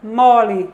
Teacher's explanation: a gente vê a palavra mole não é que é a vogal média baixa